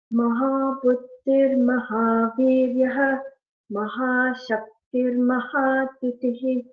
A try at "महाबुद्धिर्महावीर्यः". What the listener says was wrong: There are two Mahapranas. I guess I couldn't hear. You can stress little more. Mahabuddhir Mahavirya. Dha there.